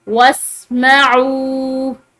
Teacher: आइन के बाद वाव साकिन है, आइन को लंबा पढ़ेंगे